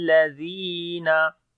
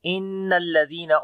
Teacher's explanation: on the noon there is shad sound, we make gunna, lam we read in light sound, zal we read in soft sound, and also we long due to ya madda.